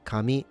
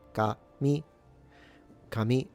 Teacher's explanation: your first note will be ka, and the second mi, ka mi. So low high